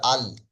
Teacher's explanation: জিহববার আগার কিনারা এবং সামনের উপরের আটটি দাঁতের গড়ার সাথে লাগিয়ে উচ্চারিত হয় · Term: লামের মাখরাজ